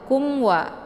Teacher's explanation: Jadi cara bacanya itu jelas bunyi mimnya. Jadi k-nya itu ditekan aja, kemudian mimnya jelas, langsung dileburkan suaranya ke wa. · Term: idhar syafawi